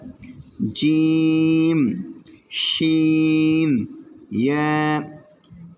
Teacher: জিহ্বার মধ্যখান তার বরাবর উপরের তালুর সঙ্গে লাগাইয়া জিম শিন ইয়া